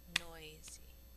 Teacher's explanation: the first syllable has emphasis which means that at the end of the second syllable we